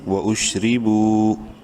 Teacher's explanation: با واو پیش بو، واو مدہ ہے، با کو ایک الف کے برابر لمبا کریں گے